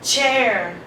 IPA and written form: tʃeə (chair)